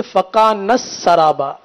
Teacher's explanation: تا کی جو ہے وہ ادائیگی نہ ہو سکی، تا حذف ہو گیا ہے